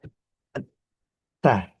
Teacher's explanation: kalau ta itu dia punya sifat tertahan yang kuat